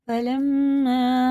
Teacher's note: شد ہے، اس لیے اسے غنہ کر کے پڑھیں گے